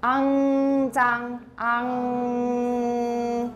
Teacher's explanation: The back of your tongue touches your soft palate or velum to make ng. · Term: angma